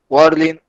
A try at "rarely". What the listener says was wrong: Rarely. Bien, un sonido más latino sería rarely.